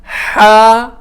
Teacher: یہ حلق سے نکلتا ہے، بالکل حلق کے بیچ سے، ہا، یہ بالکل ہلکی آواز سے، ہا، ہم اس کو بڑا ہا اور چھوٹی ہا بھی کہہ دیتے ہیں، ہا ہا۔